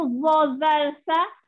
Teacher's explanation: Hujung lidah dikeluarkan dan ditekan ke hujung gigi atas.